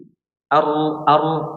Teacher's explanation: kita bisa merasakan kalau huruf ro ini memiliki sifat getaran, ya, sehingga sifat getarannya itu membuat celah huruf ro.